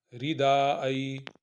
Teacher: دال کو 2 حرکت کے برابر اور ای کو نرمی کے ساتھ